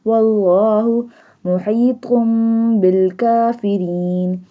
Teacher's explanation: Ra in the kafirin will not be bold because it has a kasra sign.